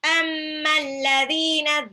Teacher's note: Mim tasjid itu punya sifat gunnah ya, sama dengan nun tasjid. Cuman karena dia ada ada alif sukun di belakang, jadi dibaca matabi'i juga 2 harokat.